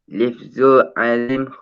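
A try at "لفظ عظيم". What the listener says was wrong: Lafzun, bukan lifzun, lafzun. Okey, lafzun azimun. Lafzun azimun.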